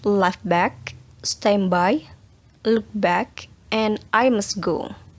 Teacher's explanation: ada beberapa kata yang memang di belakangnya T atau D itu tidak dilafalkan